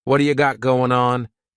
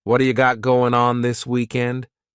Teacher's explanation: It's called a flapped T, and it just rolls off your tongue in a smooth way.